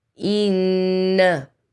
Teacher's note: To count غنة. So hold on the noon.